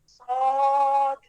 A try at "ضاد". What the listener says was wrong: احسنتی دیکھیے اب آپ جب ضاد پڑھ رہی ہیں تو نوک زبان کی نوک کو دانتوں کے باہر نکال رہی ہیں اس لیے آپ کیا پڑھ رہی ہیں یہ ہم نے نہیں پڑھنا ہم نے پڑھنا ہے صاد ضاد